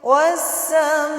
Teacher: Alif lam bertemu dengan huruf sin adalah alif lam syamsiyah. Disebut juga idgham lam ta'rif syamsiyah. Cara membacanya langsung masuk melebur ke huruf sinnya.